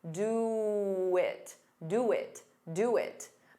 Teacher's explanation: To get rid of that pause, you can add a very soft W.